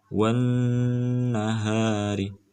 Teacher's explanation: Karena kedudukan nun sukun, nun bertasydid ini adalah dibaca gunnah, berdengung. Jadi harus dibaca dengung.